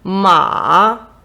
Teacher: ма ма вниз вгору е слово ма з третім тоном